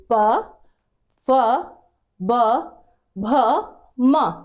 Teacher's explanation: सब में देखिए लिप्स जो आपके हो रहे हैं, टच हो रहे हैं आपस में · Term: ओष्ठ